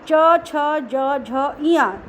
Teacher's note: आपकी जीभ दांत जहाँ से जुड़ रहा है ऊपर वाले हिस्से में टच होती है, जिसको हम तालू बोलते हैं। ये सभी के सभी वहीं पे बार बार जीभ जाती है।